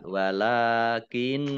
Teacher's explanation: Kemudian walakinnallaha lam fathah berdiri mat tobi'i panjang 2 harokat. Nun tasdid ya dibaca hunah atau mendengung tahan 2 harokat